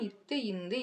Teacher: நாவின் நுனி மேல்வாய் பல்லின் அடிப்பகுதியை தொடுவதால் பிறக்கின்றன